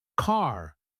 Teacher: in standard American English, we might say car with a wide open sound